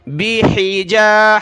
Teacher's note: ہا کو گلے سے نکالیں